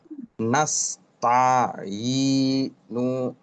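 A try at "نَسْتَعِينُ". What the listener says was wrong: নু লম্বা করা যাবে না। নাস তা প্রয়োজনে শব্দ বানান শেষ করে ভেঙে ভেঙে পড়বে এভাবে। নাস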